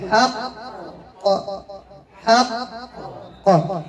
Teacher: فالقلقلة هنا كبرى، القاف في آخر الكلمة ومشددة، لا أقول حق حق لا بل أقول حق حق حق، وانتبهنا أخواتي كي لا نذهب إلى مخرج الهمزة فأقول حق حق حق أو إلى الهاء حق لنتبهنا لهذا الأمر.